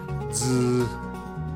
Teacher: one the letter z so this is actually pronounced z so imagine you're saying the two letters d and z together with a subtle buzz behind the front teeth